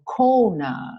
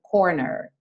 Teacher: A ideia aqui, especialmente se você tiver um inglês mais americano, é enrolar os R's sempre, tá? Todo R é enrolado.